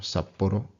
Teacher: Two tricky things here. One, the double consonant. The second one is that tapped R